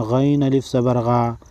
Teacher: الف سے پہلے جب زبر ہو تو اس کو الف مدہ کہتے ہیں اور ایک الف کے مقدار کھینچ کر یعنی 1 سیکنڈ لمبا کریں گے